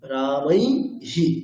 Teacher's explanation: ঐকার এবং ঔকারের ক্ষেত্রে কি হবে ইকার এবং উকারই আসবে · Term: ব্যতিক্রম